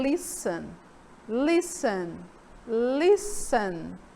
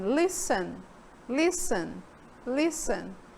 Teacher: Observe que o T lá daquele verbo, daquela palavra, praticamente some, não é? Não aparece quando eu falo. Eu passei direto do S para o EN.